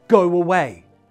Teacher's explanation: When you want to connect, go away. We intrude a w sound in the middle.